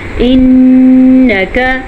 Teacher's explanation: نون پہ شد آ گئی ہے تو غنہ کرنا ضروری ہے